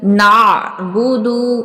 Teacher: नअबुदु आइन को वस्ते हलक से अदा करेंगे